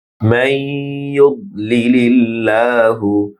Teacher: মাই মিম ইয়ার সাথে গুন্না হবে, বদের উচ্চারণ মোটা হবে।